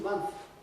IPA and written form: mʌnθ (months)